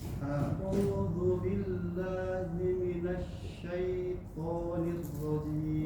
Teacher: Huruf sya ya, huruf sya harus lebih tafasyi, lebih menyebar lagi. Minasyai, jangan langsung minasyaiton.